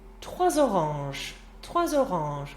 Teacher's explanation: 3 oranges. Making that Z liaison with the O.